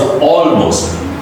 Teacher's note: all is becoming the dark L, even it's in just middle of a word, right? Because there is an A sound in the beginning, and so is an all.